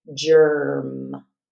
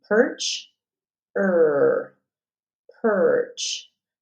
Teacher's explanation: only the r sound is what we hear in in place of the e r